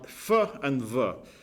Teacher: So f and v is the same sound, but they're in opposition because one is voiced, one is voiceless, one you speak with a puff of air, and one you don't. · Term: binary opposites